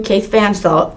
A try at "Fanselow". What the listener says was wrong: You got an extra syllable in there.